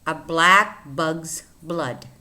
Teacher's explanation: These tongue twisters are with the sound B, which is a voiced bilabial sound